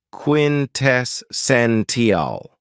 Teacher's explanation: this word has four syllables with the stress on the third syllable